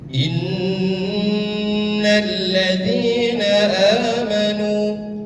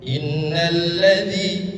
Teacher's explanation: Cara membacanya adalah dengan ditahan dua ketukan. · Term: gunah